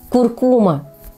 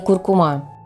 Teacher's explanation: Ударный слог в этом слове второй, хотя большинство произносит с ударением на последний.